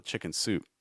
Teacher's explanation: I know chicken soup looks like a compound noun. Um a lot of times the stress is actually going to be on soup. So instead of chick chicken soup it will chicken soup stress soup.